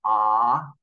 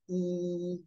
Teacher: we have a sound like ah which is a very open Sound your mouth your jaw might even drop when you say ah versus the sound e which is a very closed mouth sound